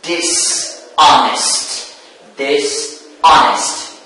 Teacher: the stress moves or shifts to the second syllable.